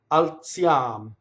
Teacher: So alziam is TZ, right? So notice that the L touches the Z and the L must phonate alziam. Notice that the I is a semivowel.